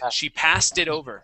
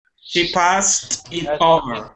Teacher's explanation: we need an ed ending at the end of pass and then right into it